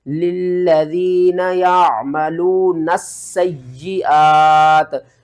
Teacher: سین کے اوپر بھی سختی کرنی ہے اور یا کے اوپر بھی سختی کرنی ہے